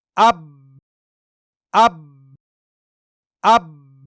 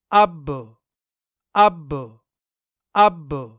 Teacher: बा को अदा करते वक्त दोनों होंठ सख्ती से बंद हो जाते हैं और साथ ही बा की आवाज भी सख्ती के साथ बंद हो जाती है · بنا قلقلہ میں با کو ادا کرتے وقت دونوں ہونٹ سختی سے بند ہو جاتے ہیں اور ساتھ ہی با کی آواز بھی سختی کے ساتھ بند ہو جاتی ہے۔ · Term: बिना कलक